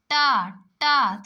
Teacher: अगर आप ट बोलेंगे दोस्तों तो आपकी जो जीभ है वो मुड़ के जाके ऊपर छुए गी ठीक है तालू को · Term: मुर्धा, मूर्धन्य